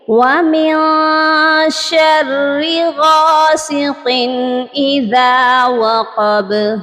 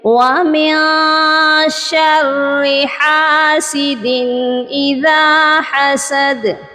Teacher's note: یہاں دونوں آیات میں وَمِن اس کے بعد شین آ رہا ہے، اور شین جو ہے حروف اخفا میں ہے، اسی لیے ہم نے شین کی وجہ سے نون ساکن پر اخفا کیا ہے، نون کی آواز کو ناک میں چھپا کر پڑھا ہے. لیکن غاسقین کے آگے حروف حلقی ہیں اور حاسدین کے آگے بھی حروف حلقی ہے، یہاں پر ہم نے اظہار کیا ہے، یعنی تنوین کی آواز کو صرف ظاہر کیا ہے.